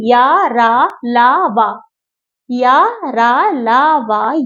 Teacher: उच्चारण करते समय जीवा पूरी तरह से मुख से किसके किसी भाग को नहीं छूती है। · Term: अंतः व्यंजन, अंतःस्थ व्यंजन